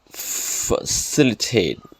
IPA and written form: fəˈsɪl.ɪ.teɪt (Facilitate)